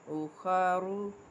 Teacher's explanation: را کو جب پیش میں پر پڑھنا ہے، یعنی کہ وصل میں، تب تو ہم اس میں ہونٹوں کو گول کریں گے، کیونکہ پیش ہے، پیش میں ہونٹ میں نے آپ کو بتایا تھا نا اسے بند ہوتے ہیں۔